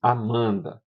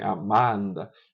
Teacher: a nasalização da sílaba seguinte, no caso começada por uma consoante nasal, afeta já a vogal da sílaba anterior